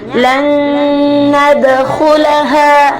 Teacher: berlaku gunnah akmal atau mendengung secara paling sempurna